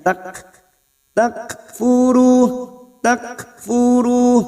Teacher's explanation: kaf sukun yang memiliki sifat hamas, maka kita nambahkan hamasnya tak, takfuru, takfuru, ru duma bertemu sukun 2 harokat matabi'i.